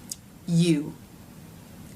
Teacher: The tip of the tongue still remains forward in the U as in boo vowel, U, here behind the bottom front teeth or slightly lower in the soft tissue.